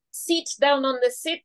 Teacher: our short vowels are stretched to long and the long ones are shorter and so seat down on the seat would be sit down